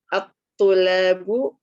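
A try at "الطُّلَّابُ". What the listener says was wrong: Lamnya pakai tasdid.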